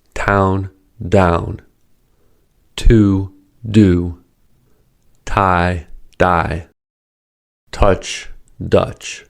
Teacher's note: Ta is unvoiced and is the counterpart to the voiced da.